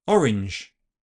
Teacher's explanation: But when I say orange repeatedly, orange, orange, I realise I actually use neither of these sounds. I actually fully devoice the zh and use voiceless fricative sh, orange. But I don't tend to do this on other similar combinations such as arrange, grunge, and hinge.